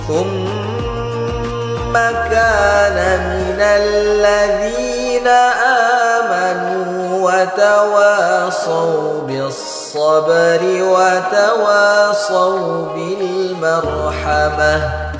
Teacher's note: Huruf H itu letaknya di tenggorokan bagian tengah. Harus kita jelaskan anginnya. Angin maksudnya udara yang mengalir, jadi harus kedengaran.